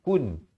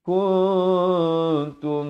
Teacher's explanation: dia bunyi dia antara nun dan ta, samar-samar begitu